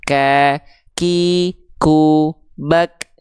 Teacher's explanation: Huruf kaf dia punya sifat huruf ya, namanya hams, tapi kadar yang keluar dari nafasnya bukan mengalir, tapi hanya berupa percikan nafas.